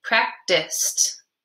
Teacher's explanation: the ED at the end of this word kind of sounds like a T